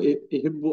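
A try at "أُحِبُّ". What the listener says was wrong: पेश है ना उस पे, ओहिब ओहिब नहीं होगा?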